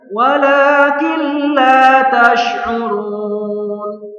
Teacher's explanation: Jadi yang benar idgham bila gunnah itu melebur tanpa mendengung, tidak boleh mendengung sini ya.